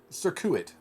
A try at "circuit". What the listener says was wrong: Too much emphasis on your syllables.